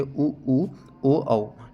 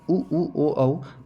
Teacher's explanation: जिन स्वर वर्णों के उच्चारण में जो हमारे होंठ होते हैं वो वृत्त के आकार में खुलते हैं, उन्हें वृत्तमुखी कहते हैं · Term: वृत्तमुखी स्वर